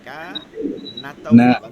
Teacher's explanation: নুনে টান নাই কাতে টান হবে কাফ কা টান হবে না তাওয়াবা। হ্যাঁ তাহলে সূরাতুন নাস এটা